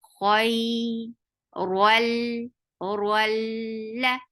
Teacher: Ra will be heavy because there is fatha on it, and attached with lam. This is idgham without gunna. So don't go to your nose at all.